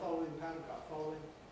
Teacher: I’ve dropped out that middle syllable and gone straight from the [l] to the [w]. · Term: compression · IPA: [ˈfɒlwɪŋ]